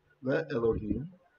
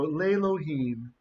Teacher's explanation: that aleph is going to lose his consonantal properties. And he's going to join the vowel here, lengthening it to tseri. So this is not even a short vowel, it's a half vowel.